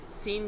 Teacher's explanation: জিহ্বার আগা নিচের দাঁতের আগার সাথে উচ্চারিত হয়